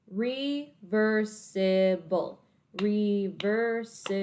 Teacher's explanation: my first syllable has that open syllable sound again because it ends in an e which is a vowel and it's the long e sound